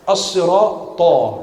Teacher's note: Ta itu qalqalah, tebal.